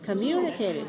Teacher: 2, 5, 2. Right, 5 syllables, stress the second syllable.